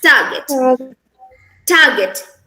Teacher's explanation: the R sound here is silent